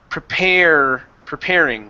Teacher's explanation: All right, let's go to the word preparing. Okay, give me a good R here at the end instead of preparing with a U